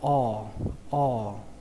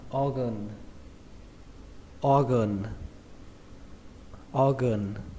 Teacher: trọng âm của từ này rơi vào âm đầu tiên, đó là âm O, giống như chữ O trong tiếng Việt, nhưng mà các bạn phải kéo dài nó ra, tại vì phía sau nó là có âm R này.